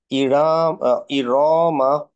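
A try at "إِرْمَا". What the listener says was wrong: রতে মাদ নেই, হ্যাঁ। না, আরেকবার, সবগুলো সমান দিব ইনশাআল্লাহ। না, রতে একটু বেশি হয়ে যাচ্ছে, ধরতে পারছো কি?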